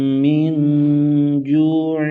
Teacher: من پر اخفا ہوگا، یعنی غنہ کریں گے